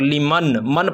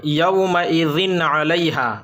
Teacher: تنوین یا نون ساکن کے بعد حروف حلقی کے 6 حرفوں میں سے کوئی بھی حرف آ جائے تو نون کو صاف صاف پڑھنا ہے، بغیر غنہ کے پڑھنا ہے اور جلد پڑھنا ہے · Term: اظہار